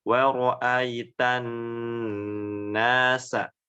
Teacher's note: nun yang bertasydid dibaca dengung yang lama